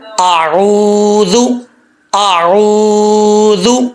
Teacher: اعوذ، پہلے حمزہ کا ساؤنڈ، حمزہ کی آواز، پھر عین کی آواز، اعوذ، اعوذ، عین کو لمبا کرنا ہے